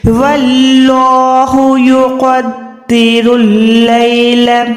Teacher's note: یہاں پر اللہ کا نام سے پہلے زبر ہے واو کے اوپر، تو یہاں پر اللہ کا نام ہم موٹا رکھیں گے